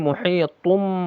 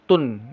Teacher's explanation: Ini artinya ini seakan-akan nun ya, tanwin itu kan nun ya. Ya, ujungnya nun ya, bertemu ba ini menjadi mim dia. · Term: iklab